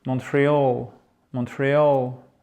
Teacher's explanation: Montreal, accent tonique, là c'est un peu spécifique, c'est sur la fin.